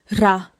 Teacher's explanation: Quick tap. Touch and leave. · Say 라 with a quick front tap, not an English R shape.